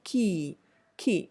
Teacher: it becomes a more more of a pre velar sound under the influence of the e vowel sound that comes after it